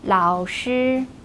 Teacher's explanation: keep the first tone high and flat